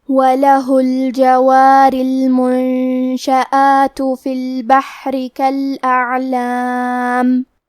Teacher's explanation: عین کی ادائیگی حلق کے درمیان والے حصے سے ہے، کیونکہ یہاں عین ساکن ہے تو ہمیں عین کو ظاہر کرنا ہے، وَلَهُ الْجَوَارِ الْمُنشَآتُ فِي الْبَحْرِ كَالْأَعْلَامِ فَبِأَيِّ آلَاءِ رَبِّكُمَا تُكَذِّبَانِ۔